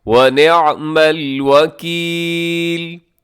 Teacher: اسے نعمل نہ پڑھیے گا، آئین کا خاص طور پہ خیال رکھیے گا